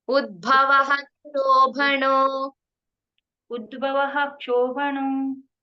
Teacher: ಉದ್ಭವ ಅನ್ನೋ ಕಡೆ ವಿಸರ್ಗ ಆದ ನಂತರ ಕ್ಷ ಅಕ್ಷರ ಬರುತ್ತಲ್ವಾ, ಪೂರ್ತಿ ವಿಸರ್ಗ ಉಚ್ಚಾರಣೆ ಮಾಡ್ಬೇಕು